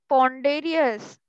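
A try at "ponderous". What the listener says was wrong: पॉन्डरस को पॉन्डेरियस बोल रहे हो यार। तो पॉन्डरस है ये, पॉन्डरस है, पॉन्डेरियस नहीं है।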